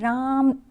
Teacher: रा वर्ड जो है ना उसको कई बार आप देर तक उसको बोलते जाएंगे ठीक है तो वो प्लूट स्वर हो जाएगा